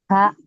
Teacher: Di tenggorokan bagian tengah atau wasatul halqi.